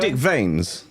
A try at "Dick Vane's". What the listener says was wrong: S is silent. The S is silent. It's French. Dick Vane. Don't try and make it cleaner.